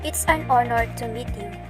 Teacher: in the word honor, H is silent, so the O, a vowel, is the first sound heard